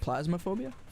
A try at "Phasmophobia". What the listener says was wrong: Phas? Phas, yeah, not Plas.